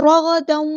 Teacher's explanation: دال کی دو زبر کو واؤ کے اندر مکس اپ کر دیں گے کیونکہ یہاں پہ ادغام ہو رہا ہے ، رغدن، اس طرح پڑھنا ہے، ادغام معلومہ یعنی ادغام ناقص